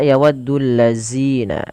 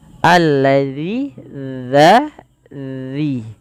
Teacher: Jangan dibaca yawaddul lazina, tapi dia dza, ujung lidah kita menempel dengan gigi sari atasnya. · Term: huruf dzal